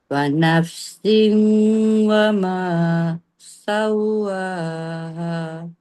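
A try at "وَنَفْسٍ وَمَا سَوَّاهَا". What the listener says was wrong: Kemaskan lagi bunyi sin tu sekali lagi.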